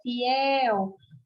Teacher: Você tá vendo que o que fica mais longo é o el? Isso quer dizer que é a sílaba mais forte.